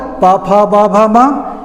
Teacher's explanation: और प वर्ग प, फ, ब, भ, म, इनके उच्चारण में दोनों ओठों में स्पर्श होता है। दोनों ओठ बंद होते हैं और अचानक खुलते हैं और तब ये ध्वनियाँ निकलती हैं। बिना ओठों को बंद किए हम प वर्ग के किसी भी वर्ण का उच्चारण नहीं कर सकते हैं। · दोनों ओठ बंद होते हैं और अचानक खुलते हैं और तब ये ध्वनियाँ निकलती हैं। बिना ओठों को बंद किए हम प वर्ग के किसी भी वर्ण का उच्चारण नहीं कर सकते हैं। तो ये स्पर्श व्यंजन है क्योंकि ये स्पर्श से ही उच्चारित होते हैं।